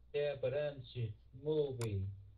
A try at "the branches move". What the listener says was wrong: Không phải movie. e á, ở phía cái chữ e ở phía sau thường mình không có đọc cái.